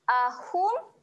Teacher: Hum kat sini kita akan baca dengan jelas jelas dia adalah bacaan yang jelas Jangan dengungkan